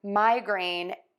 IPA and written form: ˈmaɪˌgreɪn (migraine)